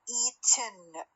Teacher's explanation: لأن الtongue doesn't move in the ten sequence but the soft palate is lowered at the end of the T. فلذلك compressed air escapes through the nose. رأسا راح يطلع لي من النوز. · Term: syllabic one, syllabic N